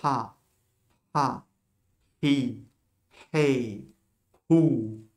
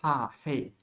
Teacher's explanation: Elle ne se prononce pas, mais la voyelle, tu mets un petit souffle à la voyelle.